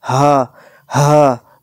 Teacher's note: وہ بڑا ہا جو ہے یہ حلق سے ادا ہوتا ہے، اور یہ چھوٹا ہا جو ہے بھاری آواز میں سینے سے ادا ہوتا ہے